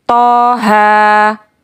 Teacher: dibaca seperti mada tabi'i, yaitu 2 harokat